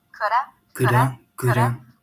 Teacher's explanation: Notice that the D is really, really light. It sounds like a flat T, like a ra, like an R in Spanish.